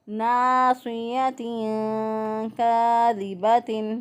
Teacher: الف پہلے والے حرف پر زبر، ایک الف کے برابر یہاں پر لمبا کریں گے۔ ناصیۃ کاذبۃ، صوت کو موٹا پڑھیں گے، اسی طرح یا کو کھینچ کے نہیں پڑھیں گے، تو یا جو ہے یہ حرکت ہے اور بڑی حرکات کو کھینچ کر نہیں پڑھتے، تو ہم یہاں پہ پڑھیں گے ناصیۃ کاذبۃ۔ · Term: الف مدہ